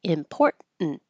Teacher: since you can drop the T, important, you won't hear either T